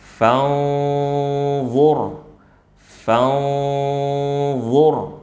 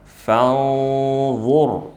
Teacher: huruf dha adalah huruf yang tebal dan dia memiliki sifat itbaq, maka suara ikhfa'nya, suara gunnahnya juga ikut tebal. Ya, yakni ketika kita baca fanzur, fanzur, jadi lidah kita, ujung lidah kita sudah disiapkan di makhrajnya, jangan langsung ditempel, cukup disentuh saja atau kita persiapkan ya.